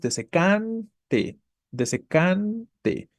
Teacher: tendríamos una palabra llana o grave con su sílaba tónica en la penúltima